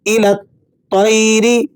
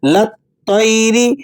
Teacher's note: وجہ کیا ہے کہ مشدد حرف یہ اس بات کا تقاضا کرتا ہے کہ جو ساکن حروف ہیں ان کو گرا دیں اور متحرک حرف کو ڈائریکٹ اس کے ساتھ ملا کر پڑھا جائے، اسی لیے آپ نے یہاں پڑھنا ہے الی الطیر، لام کو تو سے ملانا ہے